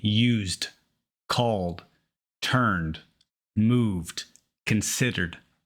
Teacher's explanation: if the sound before the Ed is voiced that is l n z it is pronounced d